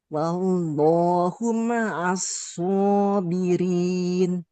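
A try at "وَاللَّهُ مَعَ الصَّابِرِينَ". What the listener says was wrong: mimnya jangan ditekan, jangan seperti bertasydid ya.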